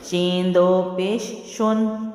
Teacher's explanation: اب شو تک تو میرے ہونٹ جو ہیں وہ گول تھے، لیکن نون کی ادائیگی میں میرے ہونٹ جو ہیں وہ سٹریٹ ہو چکے تھے